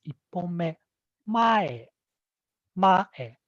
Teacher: the high pitch accents on the first syllable and then it drops suddenly on the second syllable and then levels out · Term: head high